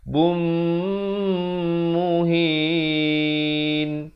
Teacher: Tanwin bertemu mim, dengungkan 2 harakat. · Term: idgham bi gunnah